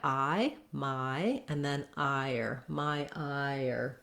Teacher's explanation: i is already moving from the ah up here to the e and then it has to come back down to the r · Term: ire